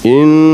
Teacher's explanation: Inna, satu alif dengungnya itu satu alif.